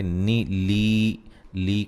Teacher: ربب، را کو موٹا ادا کریں گے، با پہ قلقلہ کریں گے. نی لی کو ایک الف کی مقدار کے برابر لمبا کریں گے، یا مدہ ہے